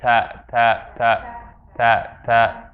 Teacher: for the ta, tongue is filling up more of the area inside the mouth.